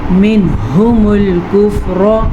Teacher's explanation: را کو پر پڑھیں گے، کاف کو باریک پڑھیں گے